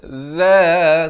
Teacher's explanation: Za, hujung lidah ini keluar. Hujung lidah ini keluar di antara dua gigi menyentuh dua gigi depan.